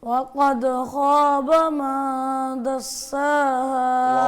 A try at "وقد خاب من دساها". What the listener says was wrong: واو پہ ہونٹ گول نہیں کیے, شروع والی جو واو ہے.